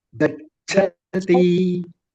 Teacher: Cha, first cha is Alpa Prana, the next cha is Mahaprana.